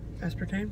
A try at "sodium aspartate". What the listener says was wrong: No, it's not tame, it's tate.